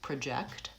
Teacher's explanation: The first vowel is schwa, it's reduced and it's short, and the second syllable is stressed